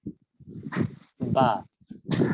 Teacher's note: ঠোঁটের ভেজা জায়গা থেকে উচ্চারিত হচ্ছে বা